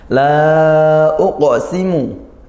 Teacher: La uqsimu, la di sini ada mad, ya, fathah di alif, kemudian bertemu hamzah. Maka kita baca panjang 2 alif atau 4 harakat. Nah, ini hukumnya jaiz munfasil, ya, seperti itu.